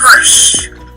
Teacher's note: there is a large space at the beginning, and pulsing begins even later.